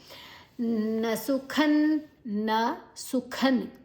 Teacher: ಸು ಆದ ನಂತರ ಖ ಮಹಾಪ್ರಾಣ, ನಂತರ ಅನುಸ್ವರದ ಉಚ್ಚಾರಣೆ ನ ಪರಾಂಗತಿಂ ನ ಪರಾಂಗತಿಂ ನ ಸುಖನ್ನ ಪರಾಂಗತಿಂ ಪರಾ ದೀರ್ಘಾಕ್ಷರ, ನಂತರ ಅನುಸ್ವರದ ಉಚ್ಚಾರಣೆ ಂಗ್, ಮುಂದಿನ ಅಕ್ಷರ ಗ ಇದೆ.